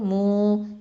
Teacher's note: அடுத்தது மீம் தொமா வாவ் சுக்கூன் மூ. இது வந்து வாவுல் மது 2 ஹரக்கத்தை நீட்டணும்.